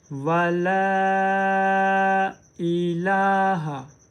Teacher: हम ला को 3 अलिफ की मिकदार लंबा करेंगे